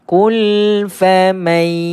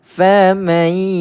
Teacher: Mana ada bunyi nun dah. Sebab apa? Sebab nun telah dimasukkan ke dalam ya. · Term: idgham ma'al gunnah